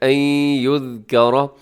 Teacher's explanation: را کے اوپر حرکت ہے تو را موٹی پڑی جاتی ہے